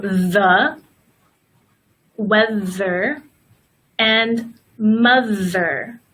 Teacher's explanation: We also have the voiced TH, and it's the same way, but there is a sound in the throat.